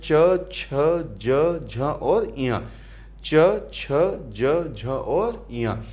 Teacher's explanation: तालव्य एक हमारा वर्ग है जिसका उच्चारण स्थान तालु यानी कि मुंह के भीतर की ऊपरी छत का पिछला भाग से होता है। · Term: तालव्य व्यंजन